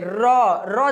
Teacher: र र जब बोलते है ना तो हमारा जो जीभ है ये कहां टच कर रहा है तो दांत के जस्ट ऊपर यानी कि मुर्धा क्या हो जाएगा ये हो जाएगा हमारा मुर्धा